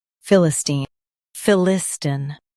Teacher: Phil i stin, Philistine Phil i stin, Philistine Emphasize Phil. Keep stine smooth.